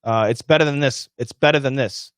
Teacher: when we say it fast, the word than sounds like then.